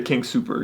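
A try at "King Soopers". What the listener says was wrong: You don't say the S at the end, and that really annoys me.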